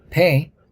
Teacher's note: If you hold your hand slightly below your mouth or put a piece of toilet paper and say pay, you will feel aspiration, burst of air, right after P sound